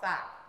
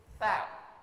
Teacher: Ujung lidah menyentuh antara gigi atas gigi bawah. Sa. Sehingga terkesan digigit. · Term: huruf sa